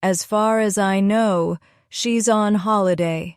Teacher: This expression comes out in one breath, almost like one long word.